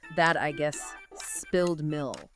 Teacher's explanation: So in phrases like that, I guess, or as you said, spilled milk, you might hear the T in that or the K in milk being stopped or unreleased